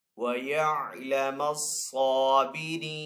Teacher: صاد کے اوپر یہاں پہ کھڑا زبر ہے تو صاد کو ایک الف دو حرکات کے برابر کھینچ کر ادا کریں گے · آگے وقف تام کی علامت ہے، وقف کرنے کی صورت میں نون کو یہاں پہ ساکن کریں گے